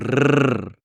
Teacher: what you do is you roll the RS, meaning you sort of vibrate the RS. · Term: rolling Rs